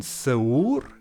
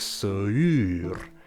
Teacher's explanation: The vowel u in se[u]r should now sound like se[y]r.